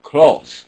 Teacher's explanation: a lot of people with accents will say close they're just making it like a single vowel